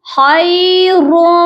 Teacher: یہاں ادغام مع الغنہ لگ رہا ہے، یعنی کہ ہم ادغام کر رہے ہیں، ملانے کو کہتے ہیں ادغام. ٹھیک ہے، ہم ملا بھی رہے ہیں اور ہماری آواز ناک میں جا رہی ہے تو ہم غنہ بھی کر رہے ہیں